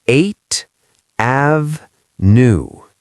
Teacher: He said, 8 Ave-new. He separated the th sound from the a sound. He put a tiny pause there, a micro-pause.